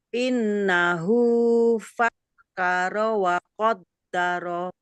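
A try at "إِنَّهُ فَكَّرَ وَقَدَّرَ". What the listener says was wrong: Ro-nya jangan dihidupkan Bunda. Karena wakaf. Fakkar wa qaddar.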